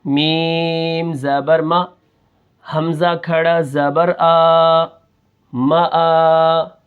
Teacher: میم کے اوپر زبر ہے تو میم کو ہم بالکل نہیں کھینچیں گے